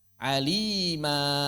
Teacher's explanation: Mad ini termasuk mad asli karena tidak bertemu dengan sebab apapun sehingga selalu dibaca dua harakat. Mad ini juga dikenal dengan nama maddul iwad karena terjadi sebagai akibat perubahan fathatain atau fathah tanwin menjadi mad.